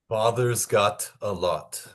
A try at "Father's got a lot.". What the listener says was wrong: Okay, so we're going to work a little bit on the rounding. So instead of father, you're going to close your lip a little, your mouth a little bit more. Say, do this. Oh,